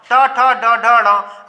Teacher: ट वर्ग का उच्चारण स्थान है मूर्धा। ठीक, ये कहलाते हैं मूर्धन्य।